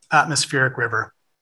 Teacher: it happens to be trochaic trimeter to get technical six syllables three feet stress on the first syllable of each foot